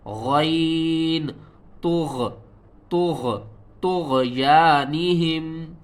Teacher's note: طا کو موٹا کر کے پڑھنا ہے، غین کے ساتھ ملانا ہے، غین کو بھی موٹا کر کے پڑھیں گے اور غین کو حلق کے سب سے اوپر والے حصے سے ادا کریں گے